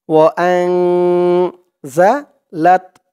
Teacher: হামজা দিয়ে নুন ধরবে, এখানে ইকফা গুন্না হবে